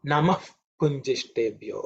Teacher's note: Because it's followed by Pa, that visarga actually is pronounced with oof, oof.